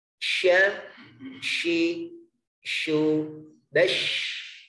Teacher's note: Sifat yang keenam yaitu sifat tafashi, artinya menyebarnya udara ke dalam mulut kita. Hurufnya yang memiliki sifat tafashi ada 1, huruf shin.